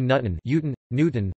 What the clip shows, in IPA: ˈɲutn̩